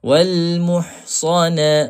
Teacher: Makhraj ha pedas di tengah halquum. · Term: huruf ha